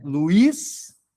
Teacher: o I se separa da vogal anterior. Ele é a vogal mais forte.